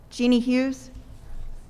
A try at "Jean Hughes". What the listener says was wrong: It's Jean Hughes, not Jeannie.